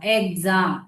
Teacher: Stressed vowel, இந்த இ வந்து ரொம்ப ஸ்ட்ரெஸ் பண்ணி சொல்றோம். ஸ்ட்ரெஸ்டு வவல் பக்கத்துல எக்ஸ் வந்து அதை வந்து வாய்ஸ்டு எக்ஸ் சவுண்டா சொல்லுவோம்.